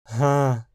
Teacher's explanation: Quando uma vogal é seguida ou precedida de um h como ra, o som aspirado da consoante pode vazar para cima da vogal, tornando a murmurada. Hã, e eventualmente isso pode fazerla ser interpretada como nasal e pronunciada assim: Hã.